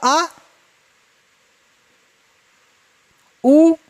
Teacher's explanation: हिंदी वर्णमाला के वे स्वर जिनका उच्चारण जीभ के पश्च भाग से होता है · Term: पश्च स्वर